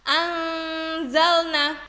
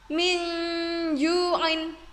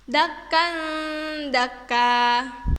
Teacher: disamarkan antara jelas dan masuk sehingga terdengar seperti bunyi NG dan NY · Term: ifa